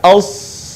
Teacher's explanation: semua lisan kita atau lidah kita terangkat as sehingga kemudian suaranya terdengar menebal